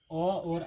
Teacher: अ और आ स्वर, ये दोनों स्वर जो है कंठ से बोला जाता है। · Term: कंठिया